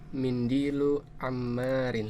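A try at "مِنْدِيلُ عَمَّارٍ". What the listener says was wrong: Iya, sahih.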